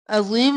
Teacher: عین گلے کے بالکل درمیان سے